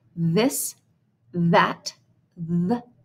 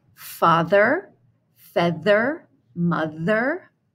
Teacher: the voiced th sound is buzzy th is voiced at the beginning of articles and function words